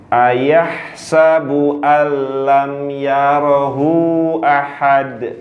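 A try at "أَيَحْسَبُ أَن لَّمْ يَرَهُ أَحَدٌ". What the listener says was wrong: Yarahu panjang dong. Kan ada tanda bendera di bawah.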